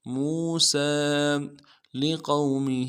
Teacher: قاف کو موٹا کریں گے، واو لین بغیر کھینچے پڑیں گے